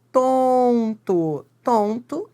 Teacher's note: esse N, nasaliza o O. Então, se ele nasaliza o O, é um dígrafo vocálico. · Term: vogal nasalizada